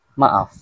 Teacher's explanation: dua huruf vokal yang hadir bersebelahan dalam satu perkataan tetapi masing-masing memiliki bunyi tersendiri iaitu tidak membentuk satu bunyi baharu